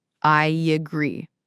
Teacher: in I agree, we naturally add a little Y sound. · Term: vowel to vowel linking